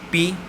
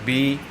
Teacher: یہ اس لیے کہ آپ کو جو بھی ساؤنڈ ان کانسوننٹس میں ہیوی لگے، بھاری لگے، اگر آپ اپنے تھروٹ پر، اپنے گلے پر تھمب رکھیں اور ان کانسوننٹس کو پروناؤنس کریں، پی، تو یہ اتنی وائبریشن نہیں کرتا، بی، اس کی وائبریشن تھوڑی زیادہ محسوس ہوتی ہے